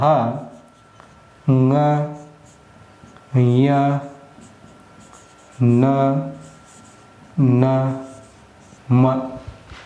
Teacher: ಮೂಗಿನ ಸಹಾಯದಿಂದ ಉಚ್ಚರಿಸಲ್ಪಡ್ತೀವಿ ಆ ಅಕ್ಷರಗಳನ್ನ ಅವು ಅನುನಾಸಿಕಗಳು